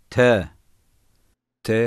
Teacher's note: dilin ucunu üst dişlerin ortasına vurarak çıkar ince gizli ve sert okunur